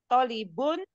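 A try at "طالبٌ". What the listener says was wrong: Tolibun. To-nya panjang. Tolibun.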